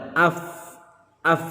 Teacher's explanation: tempat keluarnya gigi atas disentuhkan dengan bibir bawah bagian dalam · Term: huruf